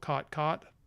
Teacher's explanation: i am a speaker of a variety of english that has this merger where the vowels o and ah are merged to ah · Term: caught caught merger